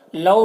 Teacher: لو میں واولین ہے، اسے نرم آواز کے ساتھ جلد پڑھیں گے